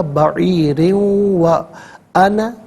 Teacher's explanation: 2 زیر کی تنوین کو واو کے ساتھ ملا کر واو کی آواز کو غننے کے ساتھ ادا کیا جائے گا